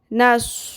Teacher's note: नून ज़बर स्वाद नस, स्वाद को पुर करें